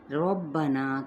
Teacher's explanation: را کے اوپر زبر ہے یہ پر پڑھا جائے گا